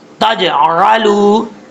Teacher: اس میں قلقلہ ہے، حروف قلقلہ میں سے ساکن ہے، تجعلوا، عین کو اپنے مخرج سے ادا کرنا ہے، حمزہ کی آواز نہیں آنی چاہیے · لگے تو تا پڑھا جاتا ہے، تا کے بعد جیم ہے، جیم جو ہے اس میں قلقلہ ہے، حروف قلقلہ میں سے ساکن ہے